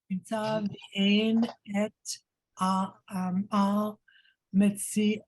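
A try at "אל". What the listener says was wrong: Not all. It's not all. L.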